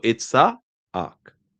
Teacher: there's a glottal stop and that ayin, right? So and then you say ak.